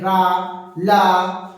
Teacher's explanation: मुख से निकलने वाली वायु घूमकर बाहर की तरफ निकलती है।